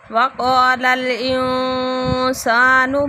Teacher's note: انسان نون ساکن کے بعد سین آ رہا ہے، اخفاء ہو رہا ہے